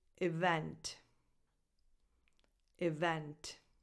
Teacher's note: The stress goes on the second syllable, so on the second E, on the second vowel.